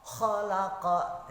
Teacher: khalaqa itu qalqalah, artinya ketika ada qaf itu huruf qalqalah itu dipantulkan